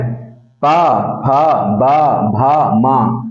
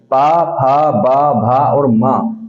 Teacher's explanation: इन व्यंजनों के उच्चारण में आपके सिर्फ होट मिलते और बिछड़ते हैं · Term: ओस्ट